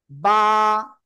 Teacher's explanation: দুই ঠোঁটের ভিজা অংশ থেকে